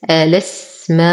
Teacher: حرف مد وبعده همز في كلمة واحدة، فالمد واجب متصل يمد بالإشباع 6 حركات